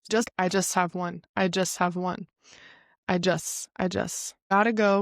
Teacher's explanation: the hiss effect which is where you don't pronounce the t when it comes after an s